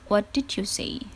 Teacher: Seperti kalau misalnya contoh in English, ada kalimat what did you say. Di sini ada penekanan kata terkait dengan what and say.